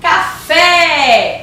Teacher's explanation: a sílaba tônica é o fé